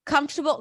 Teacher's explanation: Comfortable has the primary on the first syllable.